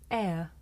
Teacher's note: this is a diphthong a double vowel sound the shape the mouth makes changes from the beginning of the sound to the end it's pronounced air did you notice how my mouth changed from